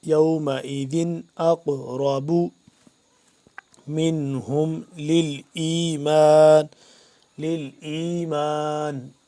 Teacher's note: اور آگے اس کے بعد یومئذ اقرب حمزہ قاف زبر اق، قاف کو ہم قلقلہ یہاں پہ کریں گے کیونکہ قاف ساکن ہے